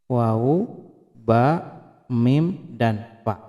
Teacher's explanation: makhrajul huruf yang dikeluarkan dari syafatain, yakni kedua buah bibir